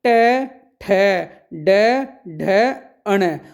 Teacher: ट ठ ड ढ अण और इन शब्दों को कहां से बोला जाता है प्यारे विद्यार्थियों मूर्धा